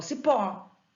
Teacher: Cipó, eu não falo cipo, eu falo cipó. A sílaba tônica está no pó